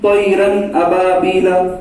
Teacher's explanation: نون کی آواز کو ظاہر کر کے بلا غنہ کے جلد پڑھے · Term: اظہار